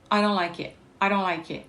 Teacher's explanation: Et encore un glottal stop. Donc le T, il n'est pas prononcé. Elle va prononcer que le I.